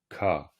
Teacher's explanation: le K se prononce K, c'est-à-dire avec une légère, alors aspiration ou expiration, c'est-à-dire un léger souffle au moment de le dire et plutôt un ton bas